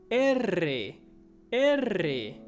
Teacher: So you have to kind of roll your tongue